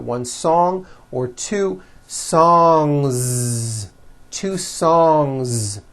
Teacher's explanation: Song ends with a voiced NG sound. So if you make it plural, don't forget to add a voiced Z ending.